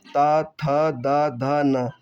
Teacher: जिन वर्णों का उच्चारण करते समय जीभ का अग्र भाग हमारे ऊपर के दांतों को स्पर्श करता है, उन्हें हम दंतीय व्यंजन कहते हैं।